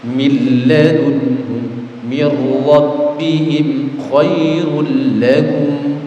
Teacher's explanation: suara nun sukun atau tanwinnya dimasukkan ke huruf lam atau ra tanpa disertai mendengung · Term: idgham bila gunna